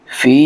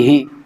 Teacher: فا کے ساتھ یہ جو یا مدہ ہے اس کو ہم کھینچیں گے، لیکن ہا کو نہیں کھینچیں گے کیونکہ ہا کے نیچے زیر ہے۔